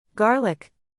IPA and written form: ˈɡɑr.lɪk (Garlic)